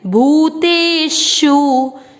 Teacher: आधे अक्षर को पूरे के साथ पढ़ना है, सर्व, सर्व। भ पर बड़े ऊ की मात्रा लंबा खींचिए